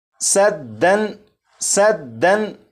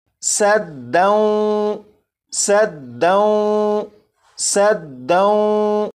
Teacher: جب تنوین کے بعد واو ہے تو یہاں پر ادغام ہوگا، اور ادغام کے قاعدے کے مطابق یہاں پر غنہ بھی کریں گے